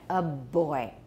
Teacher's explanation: The vibration went all the way through, didn't stop.